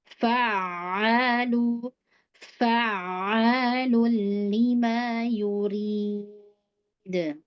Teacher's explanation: Ada tasydid, ditekan huruf ain. Sedikit lama ya, dilamain.